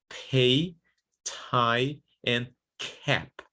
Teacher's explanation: So in English, when you have initial pataka, or when it's even in the middle of a word, but in the beginning of a stressed syllable, these consonants, they need aspiration. So they need to be pronounced pay, tie, and cap with this aspiration.